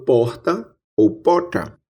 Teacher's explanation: Ouça, eu falo porta ou porta. Aqui no interior da Paraíba, como em boa parte do interior do Nordeste, temos a pronúncia de uma fricativa aspirada R.